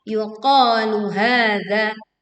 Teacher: Qa panjang 2 harokat, ha juga sama panjang 2 harokat.